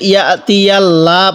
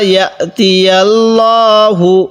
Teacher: আর এই লামের মধ্যে ইয়াতিয়াল্লাহ পড়ব না, এই লামটিকে আমরা পুর করে পড়ব, কারণ আল্লাহ শব্দের লামের পূর্বে জবর থাকলে লামটিকে মোটা করে পড়তে হয়